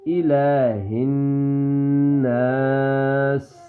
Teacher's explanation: ٹھیک ہے, الہن آگے نون مشدد غنہ ہوگا. نون کی مکمل آواز کو 1 سیکنڈ کے برابر چھپائیں گے